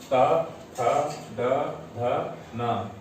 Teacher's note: दंत से, और इन सभी वर्णों को हम दंत वर्ण कहते हैं